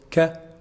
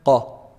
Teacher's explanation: It's the back or the end towards the end of the tongue, but it's not the farthest part like qaf. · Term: kaf